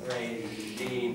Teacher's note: It's like sh, but it's voiced.